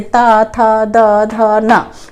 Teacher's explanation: दांत से छू के ये वर्ण बोले जाते हैं